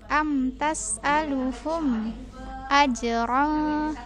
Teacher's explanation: nih aj dipantul dulu huruf qalqalah.